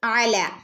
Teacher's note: അല അയിന് തൊണ്ടേൻ്റെ നടുക്കുന്ന് വരണം കേട്ടോ.